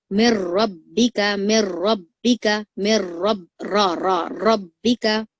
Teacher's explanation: तो आपको ये रॉ को मोटा ही पढ़ना रहेगा क्योंकि रॉ के ऊपर जबर है